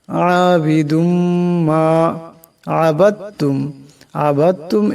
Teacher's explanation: আবিদুম এখানে দালের উপর দুই পেশার তনবিন, এরপর মিম আসছে, তাই এই দাল মিমের সাথে ইদগাম হয়ে যাবে এবং এই ইদগামকে এক আলিফ পরিমাণ গুণনা করিয়া পড়তে হবে।